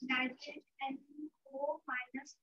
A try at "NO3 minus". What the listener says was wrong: NO3 minus. पहले पूरा पढ़िए उसके बाद ये चार्ज पढ़िए. NO3 minus.